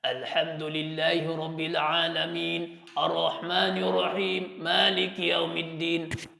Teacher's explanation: orang Arab badui ia membaca dengan suara dari pangkal pangkal tenggorokannya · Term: dari pangkal tenggorokan